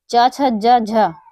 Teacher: तालु से उच्चारित होते हैं। ये मूर्धा से उच्चारित नहीं होते हैं। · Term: तालव्य